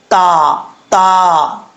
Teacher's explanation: زبان کی نوک اوپر والے دانتوں کی جڑوں سے لگے تو تا پڑھا جاتا ہے باریک